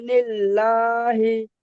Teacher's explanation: আল্লাহ লামকে বারিক করে পড়তে হবে, অর্থাৎ লা করে পড়তে হবে